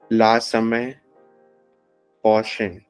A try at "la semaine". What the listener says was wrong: La semaine. We say the N.